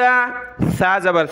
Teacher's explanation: سا پر زبان کی نوک دانتوں سے باہر نکال کر نرمی کے ساتھ پڑھنا ہے، اس کی جگہ ہم نے سین نہیں پڑھنا۔